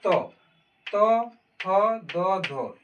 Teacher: यानी अगर हम देखें हमारा जीभ कहाँ स्पर्श करता है, जैसे तो बोलते हैं तो जैसे हम तो बोलते हैं तो हमारा जीभ दांत को स्पर्श करता है। त थ कर रहा है ना, तो थ दो धो ये हो जाएगा दंत।